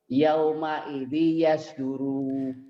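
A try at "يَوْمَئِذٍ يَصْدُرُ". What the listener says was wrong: Enggak panjang Pak. Yauma idin yasduru. Kalau dihentikan ini dihentikan kan, kalau baca Quran mah dihentikan. Yauma idin yasdur. Coba Pak, hentikan.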